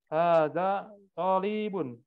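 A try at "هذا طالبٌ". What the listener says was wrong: To'nya yang panjang ya, li-nya pendek. Talibun.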